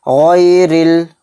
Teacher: را کے نیچے زیر ہے تو را باریک پڑھی جائے گی